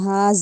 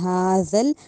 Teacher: ہا نہیں کہنا، ہا کہنا ہے۔ ذل، اب جو ذال ہے اس کو زا کی ساؤنڈ نہیں دینی، یعنی سختی سے نہیں پڑھنا